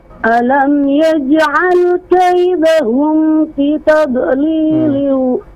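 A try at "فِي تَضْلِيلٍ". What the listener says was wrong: Fi dua harakat. Dipanjangkan dulu kalau diusahakan ya.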